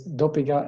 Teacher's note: you insert the vowel sound E, and it becomes the beginning of a new syllable, and you have a 3-syllable word. But some speakers don't really care.